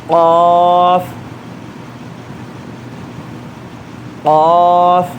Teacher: ہمارے حلق میں اوپر سے لٹکتی ہوئی ایک چھوٹی زبان رہتی، وہ زبان نیچے ٹچ ہو کے الگ ہونا. جب بھی قاف آتا اس کے بغیر قاف کا پروننسیشن آتا نہیں.